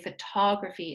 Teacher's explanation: A lot of students say photography, but we know that for this rule, it's a third to last syllable that's stressed